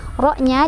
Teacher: Ro-nya dibaca secara tafkhim karena ro sukunnya didahului oleh huruf berbaris fathah.